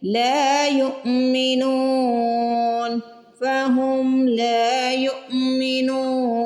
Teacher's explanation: نون پہ پیش آ رہی ہے، پیش کے بعد واو ساکن ہے تو واو مدہ آ رہی ہے، اس کو کھینچ کے ادا کریں گے. وقف کی وجہ سے نون کو زیادہ بھی کھینچ کے ادا کر سکتے ہیں تو یہ مد عارض بن جائے گی.